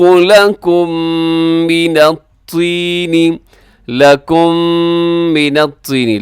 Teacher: لکم میم ساکن کے بعد میم ہے تو یہاں پہ کیا ہوگا ادغام شفوی غننے کے ساتھ